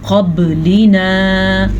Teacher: قاف موٹا اور با پہ کلکلا